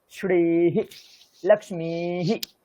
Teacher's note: শ্রী যেহেতু দীর্ঘি আছে, তারপরে হিরও দীর্ঘি হবে, কিন্তু উচ্চারণে হয় না, তাই জন্য আমি এখানে রস্বী করে দিয়েছি।